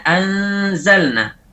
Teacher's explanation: Pada saat kita mengucapkan anzalna, huruf yang diikhfakan kita ucapkan tersendiri. Baru setelah itu kita ucapkan zai setelahnya.